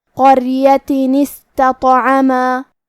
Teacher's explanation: آخری میں تا مدورہ کی حرکت ہے تنوین زیر، اور کیونکہ تنوین کی اصلیت نون ساکن ہے اور کلمت استطعما کی شروعات میں الف ساکن ہے، اور کیونکہ قرآن میں 2 حرف ساکن ساتھ میں نہیں پڑھے جاتے، لہذا ہمیں تنوین کو جو کہ نون ساکن ہے اسے زیر سے پڑھتے ہوئے پھر کلمت استطعما کو پڑھنا ہے